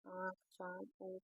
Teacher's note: फिर नेक्स्ट हमारा आ जाता है अनुनासिक, जिनका उच्चारण मुख और नाक दोनों से होता है। इसमें वायु मुख के साथ साथ नाक से भी निकलती है